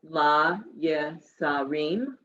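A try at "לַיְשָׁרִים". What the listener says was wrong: Sharim. It's the shin.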